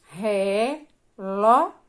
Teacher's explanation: É o ló, né? A segunda sílaba da palavra relógio, que é a mais forte. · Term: sílaba tônica